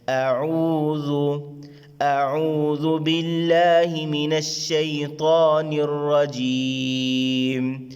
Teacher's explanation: حمزہ حلقے آری حصے سے سینے کی طرف سے ادا کریں گے